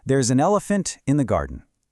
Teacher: the n sound at the end of the word an completely attaches to the e at the beginning of elephant